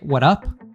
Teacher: removing the S at the end of what's and having the connected speech there with the American T